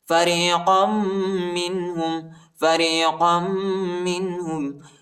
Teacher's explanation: قاف کو میم کے ساتھ ملائیں گے اور غنہ کریں گے